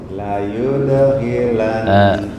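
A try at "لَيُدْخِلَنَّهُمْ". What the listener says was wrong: Oleh ini nggak ada perbedaan dengan ha nih. La yudhi sama la yudhi apa bedanya? La yudkhilan kha harus jelas. La yudkhilan. PR di kha ya. Kha perlu latihan agak lama nih.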